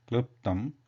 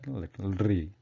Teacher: And somewhat like the English word table, that the end table, just table. There is no full touch of the tongue to the back of the front teeth, but it's almost there.